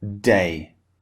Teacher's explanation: the D sound when it comes at the beginning it's very forceful